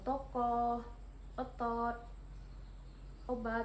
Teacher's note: vokal o madia bawah belakang dengan posisi mulut semi terbuka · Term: vokal O madiyah bawah belakang